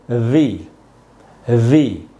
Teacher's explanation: ऊपर के जो दांत हैं उनको नीचे के होठों पे लगाना है, और होठ आपस में टच नहीं होने चाहिए